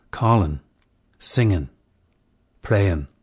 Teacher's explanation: ing suffixes should be reduced to in.